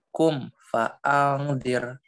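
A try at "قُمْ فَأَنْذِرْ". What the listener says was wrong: Ya, baca angnya lebih lama dikit ya, ikhfa. Fa'andir.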